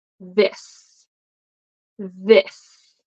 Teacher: Okay, so this, there is vibration, so it's voiced. So the correct way to pronounce this is tongue between your teeth.